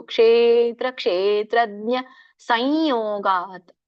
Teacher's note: ಕ್ಷೇತ್ರಜ್ಞ ದೀರ್ಘ ಇರೋದ್ರಿಂದ ಕ್ಷೇ ಎಳಿಬೇಕು. ಕ್ಷೇತ್ರ ಕ್ಷೇತ್ರಜ್ಞ ಸಂಯೋಗಾತ್, ಅಲ್ಲಿ ಸಾನುನಾಸಿಕ ಯ ಬರುತ್ತೆ.